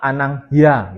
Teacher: Anang hi terus dapat sufix a anang hya gitu ya. I-nya hilang dia menjadi bentuk semivokal y.